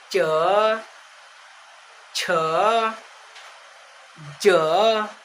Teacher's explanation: जैसे ये जीभ है ना, जीभ के ऊपर वाला भाग को हम लोग क्या बोलेंगे, तालु बोलेंगे। जैसे अगर आप लोग उच्चारण करिएगा च, तो जीभ स्ट्रेट लाइन में रहेगी, मतलब सीधा, और ऊपर जाके टच करेगी। जीभ सीधा रख के कहाँ ऊपर टच करेगी बच्चों, ऊपर टच करेगी।